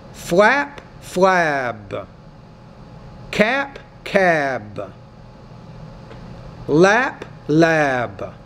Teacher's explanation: When the P's at the end of the word, because it's a voiceless consonant, the vowel which precedes it is shorter. Similarly, when the B's at the end of the word, because it's a voice consonant, the vowel which precedes it is longer.